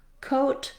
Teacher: no w gliding shape, so I can just go right from my k to my O